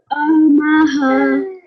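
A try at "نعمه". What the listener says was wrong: We're going to change the vertical dhamma into a sukoon. So we're going to read it as na'amah. Na'amah.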